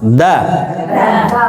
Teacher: Tapi dal dalam bahasa Arab niku tidak terlalu ke atas lidahnya. Persis di atas gigi atas.